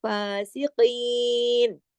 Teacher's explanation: الل فا، الف کے برابر، ایک الف کے برابر، یعنی دو حرکات فا کھینچے گا